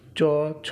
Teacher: উচ্চারণ স্থান তালু তাই এগুলিকে তালব্য বর্ণ বলা হয়